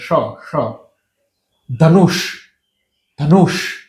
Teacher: ત્યાં એક જગ્યાએ અડે છે અને એ જે જગ્યા છે ને જ્યાંથી તમે ટ બોલો છો ને જ્યાંથી તમે ઢ બોલો છે ઠ બોલો છો ડ બોલો છો ઢ બોલો છો ત્યાંથી જ આ ષ નીકળે છે